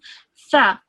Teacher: So your tongue comes out a little bit, you touches the top of your teeth.